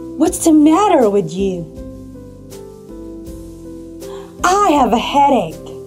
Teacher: Did you notice that my tone went down? That is the falling intonation.